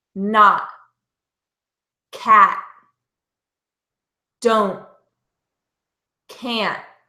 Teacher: my tongue is staying up behind my front teeth